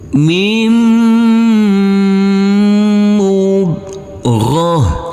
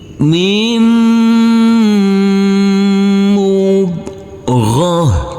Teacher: Huruf mim ini langsung masuk ke huruf mim yang bertasydid ini, karena di sini ada huruf nun yang bertemu dengan huruf mim, huruf nun sukun, maka ini adalah bacaan idgham bi gunnah. Huruf mim yang bertasydid ini kita dengungkan, kita tahan, serta kita tekan.